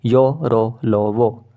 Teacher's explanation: अंतस्थ व्यंजन जो होते हैं सघोष और अल्प प्राण दोनों होते हैं य और व को अर्ध स्वर कहते हैं र को लुंठित